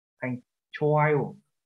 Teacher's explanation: Có chữ hờ ở đây, chúng ta đọc là âm câm, đọc là chowayo. Nhưng chúng ta có chữ hờ là âm bật hơi. Cho nên chúng ta phải hạ giọng cái chô này xuống ạ, thành chowayo.